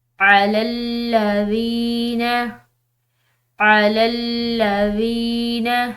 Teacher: ذال کے بعد یا ساکن ہے تو ہم نے اس کو ایک الف کی مقدار لمبا پڑھنا ہے